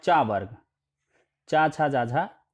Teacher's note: ये तालु से उच्चारित होंगे